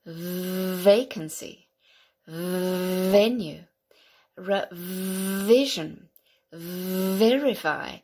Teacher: so the V is the voiced version of the F